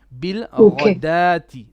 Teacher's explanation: This is actually radati. The wow here, it is silent. It is like an alif.